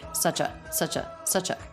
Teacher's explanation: notice the CH sound links right into the schwa a nice smooth ending consonant to beginning vowel link